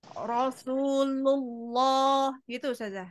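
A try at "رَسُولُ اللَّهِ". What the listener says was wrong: Jangan ditutup. Rasulullahi. Di depan. Ibu tuh begini. Rasulullah. Berusaha menebalkannya pakai bibir. Padahal pakai lam. Rasulullahi. Allahi. Allahi. Buka supaya tidak masuk ke mim.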